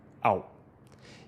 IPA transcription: aw